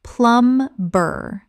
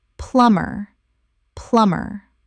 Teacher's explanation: The B is completely silent. Two syllables only. Example. The plumber arrived within the hour and fixed the leak so efficiently that the whole job was finished in 30 minutes.